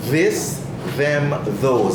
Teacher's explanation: Vibration in the vocal folds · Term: hard sound